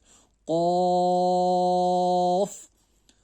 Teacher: जो जुबान का जो पिछले वाला हिस्सा है वो थोड़ा उठता है कॉफ के पढ़ने के वक्त